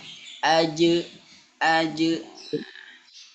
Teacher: Huruf jim dia memiliki sifat qalqalah, mantul. Dia mantul. Tapi pantulannya ingat ya, pantulannya harus ke e ya.